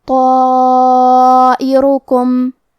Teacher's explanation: ہم اپنی آواز 4 مد کے برابر لمبی کریں گے، کیونکہ اس کے پہلے حرف تو کا حکم ہے تفخیم، تو ہم یہ مد کو بھی بھاری آواز میں ادا کریں گے. طائرکم را پہ پیش ہے اور حرف الکاف پہ بھی پیش ہے، تو ہم یہ دونوں پیش کو ظاہر کریں گے.